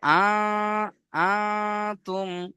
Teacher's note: নুন সাকিনকে বা নুন সাকিনের আওয়াজকে নাকের মধ্যে তুলে 1 আলিফ গুণনা করে পড়তে হবে। তাহলে আ তুম, এখানে গুণনা করবেন প্রত্যেকে 1 আলিফ।